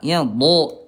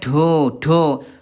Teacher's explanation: Dari segi udara dia jahar, tidak keluar udara